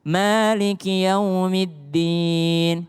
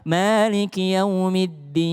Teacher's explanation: D Indonesia itu D lidah ketemu dengan gusi. Tapi dal dalam bahasa Arab, dal malik yaumiddin itu adalah lidah bertemu dengan belakang gigi atas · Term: huruf dal